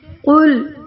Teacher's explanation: اب دیکھیں قل قاف موٹا پڑا جانے والا ہے، لام باریک کیونکہ یہ دوسرا لام ہے اللہ کے لام کے علاوہ. ہوا یہاں کو کچھ بھی حرف جو ہے کھینچنے والا نہیں ہے.